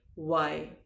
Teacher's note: इसको वाई नहीं बोलेंगे, वाई बोलेंगे। वैसे ही दांतों से होठों को नहीं दबाएंगे, होठों को थोड़ा सा गोल घुमाकर बोलेंगे